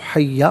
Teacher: دو زبر کی تنوین وقف میں الف سے چینج ہو جاتی ہے